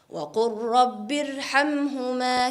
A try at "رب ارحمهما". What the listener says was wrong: I thought in Rabbi Irhamhuma, I thought you pronounced a ra empty mouth, where it should be pronounced full mouth.